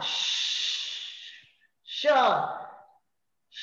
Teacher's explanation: ती हवा मुखविवरात आल्यानंतर आपली जीभ वर उचलली जाते, अवरोध करते हवेला. जीभ वर उचलली गेल्यानंतर काही एक सापट शिल्लक राहते. त्या सापटीतून हवा बाहेर पडायचा प्रयत्न करते आणि सापटीतून प्रयत्न करताना तिचं घर्षण होतं आणि घर्षण झाल्यामुळे काही उच्चार होतात. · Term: घर्षक स्वन